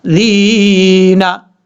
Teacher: لا، ان اللہ، ذال یا زر ذی، نون زبر نا، ذینا، ذال میں سیٹی نہیں آئے گی، اور ذال کے بعد جو یا ہے یہ یا مدہ ہے، ایک الف کی مقدار لمبا کر کے پڑھیں گے ، ذینا، اس طریقے سے۔ اب اس کو ہم پڑھتے ہیں